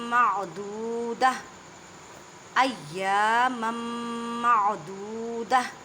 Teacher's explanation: یہ گول تا ہے، وقف آ گیا، اس تا کی آواز کو ہاں میں بدل دینا ہے۔